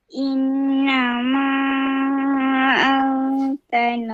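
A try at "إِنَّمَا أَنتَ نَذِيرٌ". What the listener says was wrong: Oke. Masya-Allah. Very good.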